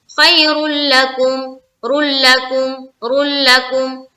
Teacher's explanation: तो यहाँ पर देखें, लाम और रा जब हर्फ आ जाए तनवीन या नून साकिन के बाद, तो वहां पर इदगाम ताम होता है, यानी कि बगैर गुन्ना के इदगाम। तो यहाँ पर हम इदगाम तो करेंगे लेकिन बगैर गुन्ना के, यानी कि रुकना भी नहीं है, नाक में आवाज भी नहीं रोकनी, बस पढ़ के निकल जाना है इदगाम करते हुए।